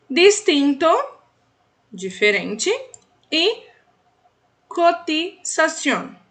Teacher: E igualzinho a gente tem lá no D, a gente vai imaginar aqui, ó, essa sílaba com TI, ao invés de falarmos ti, igual no português, nós vamos falar ti, ou seja, dando ênfase no I, pronunciando o T com leveza